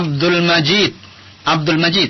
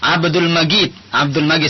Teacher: Kalau Mesir misalnya Jim itu sering dibaca ghim.